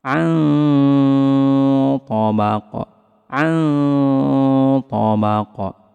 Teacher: Karena huruf ta huruf tebal maka samarnya lebih ditebalkan.